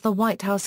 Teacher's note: a compound such as the White House normally has a falling intonation